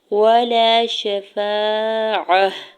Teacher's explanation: عین کے اوپر زبر ہے، جلدی سے ادا کرنا ہے، تا کے اوپر دو پیش کی تنوین ہے، اور آگے چھوٹی طوا وقف مطلق کی علامت ہے، تو یہاں پہ وقف کرنے کی صورت میں گول تا کو ہا میں بدل دیں گی، ولا شفاعہ پڑھیں گے، ٹھیک ہے۔